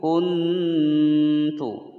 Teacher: nun sukun bertemu ta. Ini hukum bacaan ikhfa aqrab, ya. Masih terdengar suara nunnya.